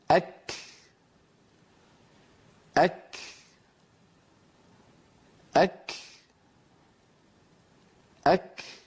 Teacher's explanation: لما يبتعد اللسان عن مخرج الكاف ينطلق النفس الذي كان محبوسا خلف اللسان. إذن الهمس في الكاف ليس يعني عمل يتكلفه الإنسان، هو أمر طبيعي.